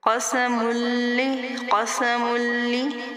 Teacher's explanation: میم کو لام کے ساتھ ملائیں گے کیونکہ یہ مشدد ہے، اور اس کو تھوڑا سختی کے ساتھ تھوڑا روک کر پہلے حرف کے ساتھ ملا کر پھر دوسری مرتبہ خود سے اسی جو اس کا مخرج ہے اس کا ادا کریں گے۔